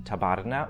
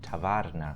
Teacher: the B between two vowels in tabarna would also undergo soft mutation to become tavarna